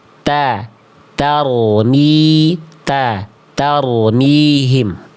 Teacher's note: Ujung lidahnya tuh nongol, ujung lidahnya keluar.